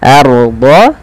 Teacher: tebalkan ra sukunnya karena ia ra tafkhim, yang dimana ra sukun didahului dengan fathah